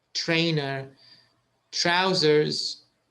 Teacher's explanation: it's just a t and an r but it's a ch sound